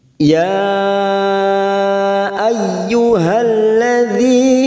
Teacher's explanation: panjangnya kita samakan dengan majais munfasil yang seperti biasanya empat harakat kita panjangkan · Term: Mad Jaiz munfasil hukmi